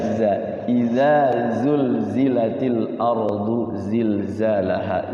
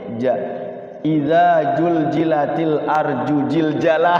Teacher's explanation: Za itu larinya ke jim, ja.